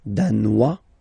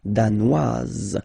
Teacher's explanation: Danois, don't pronounce the final S. Danoise, here you pronounce it.